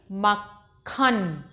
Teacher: देखो इसमें का की भी साउंड निकल रही है और खा की भी साउंड निकल रही है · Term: संयुक्ताक्षर